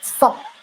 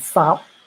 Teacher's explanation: Sub short vowel have a high tone and sab long vowel in a low tone.